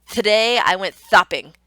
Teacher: they're actually putting their tongue on their teeth rather than on that alveolar ridge. And so it's making that, "thday I went thopping," sound because their tongue placement is not where the average speaker would be. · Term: lisps